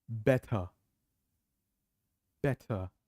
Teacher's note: British T, which is the sharp T, very clear, very crisp T · So T remains T and R is in the end of the word, so R is silent. Yeah? So better.